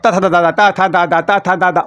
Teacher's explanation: मतलब दांतों का प्रयोग मैं कर रहा हूँ तो दंत वाले में आएंगे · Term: दंत ध्वनियाँ